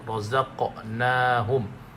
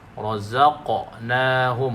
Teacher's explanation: Qaf tu dipantulkan. Razaqnahum, pantulkan tu. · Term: qalqalah